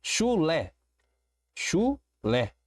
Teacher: Eu tenho uma palavra com duas sílabas, já não é um monossílabo. E eu percebo que a última sílaba é a sílaba tônica. Então é uma oxítona classificada como oxítona.